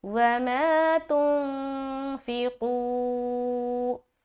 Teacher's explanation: تو بہرحال یہاں پر الف مدہ، پھر اخفا، پھر یہاں پر قاف کو موٹا رکھ کے واو مدہ